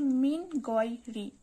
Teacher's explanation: এখানেও নুন সাকিনের বামে গয়েন রয়েছে, ইজহারের হরফ, কিন্তু এখানে গুন্না ছাড়া স্পষ্ট করে পড়তে হচ্ছে